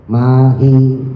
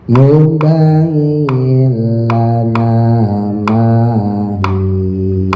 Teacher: Atau ya-nya dibaca mahia, itu penyakit mama yang awam. Ya, hi-nya panjang 2 harokat